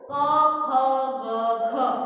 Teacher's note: ક ખ ગ ક્યાંથી ઉચ્ચારાય છે અહીંયા કંઠમાંથી ઉચ્ચારાય છે એટલે એને કંઠ્ય વ્યંજનો કહેવાય